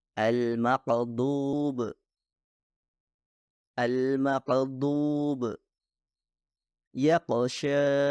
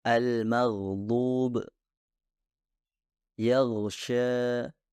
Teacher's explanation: suara gain seharusnya mengalir dengan lancar dan memiliki sifat kontinu